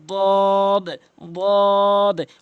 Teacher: এরপর রয়েছে দদ দদ, অর্থাৎ জিব্বার গোড়া উপরে মারির সঙ্গে লাগিয়ে 3 আলিফ করে টেনে পড়বেন